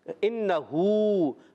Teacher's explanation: یہاں پر حمزہ خوب ظاہر کریں گے، نون مشدد، ایک الف کا غنہ کرنا ہے